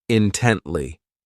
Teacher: This adverb has three syllables and the stress is on that second syllable